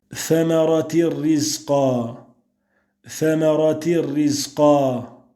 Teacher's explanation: Il n'y a aucune nasalisation.